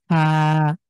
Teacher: সামনের উপরের পাটির দাঁত সামনের যে দাঁত রয়েছে সেটা এসে নিচের ঠোঁটের মাঝখানে লাগবে